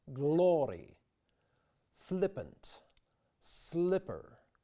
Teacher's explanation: It's perhaps because this thick L sound seems to block off the throat that singers resist that temptation and try to sing a more pointed, flipped L, produced by the tip of the pointed tongue against the top front teeth